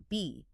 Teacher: In phonetics, that is called a bilabial stop.